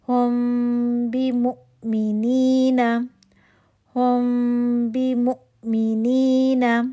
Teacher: اخفاء شفی کا role, paper تھن گیپ 2 count کا غنہ. بی مو میم کی پیش کے لیے ہونٹ گول ہوگا، لیکن میم کے مخرج پہ جانے کے لیے پہلے آپ دونوں ہونٹ بند کریں گے، پھر ہونٹ گول کریں گے. · مو حمزہ آگے ساکن آ رہا ہے، اس پہ جھٹکا آئے گا. واؤ جو ہے وہ علت حرف ہے، وہ نہیں پڑھا جا رہا، ہم حمزہ کو پڑھ رہے ہیں. حمزہ ساکن ہے، اس پہ جھٹکا آئے گا